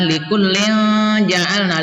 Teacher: Kemudian yang kelima likullin ja'alna, likullin ini juga ifa hakiki disamarkan ya, tanwin kasrohnya disamarkan dan berdengung